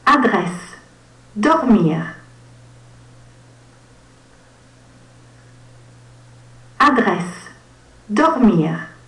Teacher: o som do R, o qual vem da garganta, né? É produzido na garganta.